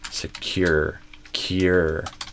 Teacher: Security stress on the cure. And notice also there's a kind of a hidden Y here.